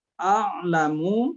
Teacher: Jadi ya, a-nya dimulai dari a-nya di pangkal tenggorokan, sedangkan ainnya di tengah tenggorokan.